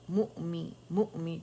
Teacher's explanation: حمزہ پہ جھٹکا دیں گے